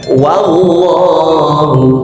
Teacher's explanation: Berkali-kali saya ingatkan wau dipatah itu dibaca wa. Tidak ada ustaz yang mengajarkan wau dipatah dibaca wo.